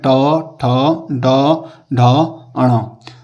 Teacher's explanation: ट वर्ग का उच्चारण स्थान होता है मूर्धन्य